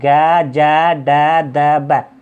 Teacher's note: इनके बोलने में कम हवा निकलती है, बोल के देख लिया आप, ग जै डै दै बै, कम हवा निकलती है मुख से, तो क्या है, अल्पप्राण है